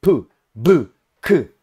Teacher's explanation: Consoante tem um obstáculo para o ar, vogal não tem nenhum obstáculo, o ar sai livremente. Consoantes oclusivas, o ar para totalmente